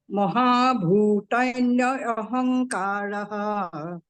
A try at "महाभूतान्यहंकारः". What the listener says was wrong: न्य बोल रहे हैं आप न्य बोल रहे हैं तो अहंकार को अलग मत करिए। महाभूतान्यहंकान्यहं, आप बोल रहे हैं न पे ज्यादा मत रुकिए।